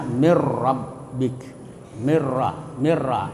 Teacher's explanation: Ya, cara membacanya mengidegamkan nun pada huruf ra. Jadi dimasukkan nun itu kepada ra tetapi tanpa mendengung. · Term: idgam bila gunah, idgham bila guna